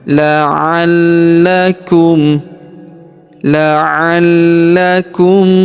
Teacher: huruf la kita tahan dan tekan karena terdapat tanda tasydid di atasnya. La'allakum la'allakum tattaquun.